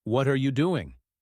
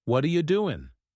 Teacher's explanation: native speakers link words smoothly instead of saying what are you doing word by word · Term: linking words